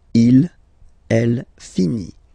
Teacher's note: So IT, final T not pronounced.